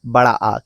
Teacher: इसमें केवल एक स्वर आता है, जो कि है बड़ा आ, क्योंकि बड़ा आ के उच्चारण में मुख द्वार सबसे ज्यादा खुलता है। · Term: विवृत स्वर